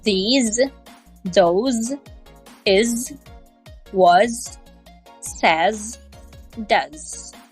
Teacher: in spoken American English many words end with this z sound the letter at the end of the word maybe s but the sound of the letter is often Z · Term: Z ending sound